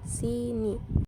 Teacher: I fonem I mempunyai dua macam realisasi yang pertama direalisasikan sebagai bunyi I tinggi atas depan tak bundar apabila berada pada Sil terbuka atau silab tak berkoda seperti pada